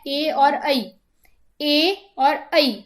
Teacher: ए और ऐ ये हमारे कंठ और तालु इन दोनों से बोले जाते हैं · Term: कंठ तालु